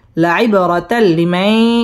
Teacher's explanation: লাম ইদগামে বেলা গুন্নার হরফ গুন্না ছাড়া মিলিয়ে পড়তে হবে লাইবরাতাল্লিমাই ইদগামে বা গুন্না সহ মিলিয়ে পড়তে হবে